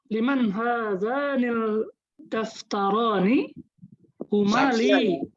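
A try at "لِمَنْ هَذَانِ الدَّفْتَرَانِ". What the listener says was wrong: Huruf dal itu syamsiah. Hadzanid daftaroni.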